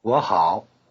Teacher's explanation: 我, I, normally in the low tone, becomes 我 in the rising tone before the low tone of 好. Saying two low tones in a row is always avoided in this way.